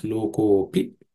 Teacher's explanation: The ha, visarga at the end of the word lokaha turns into u, and so ka plus u becomes ko, loko, and the a becomes silent. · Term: sandhi